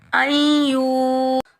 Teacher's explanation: यहाँ हम इदगाम के साथ एक अलिफ की मिकदार गुन्ना कर कर पढ़ेंगे।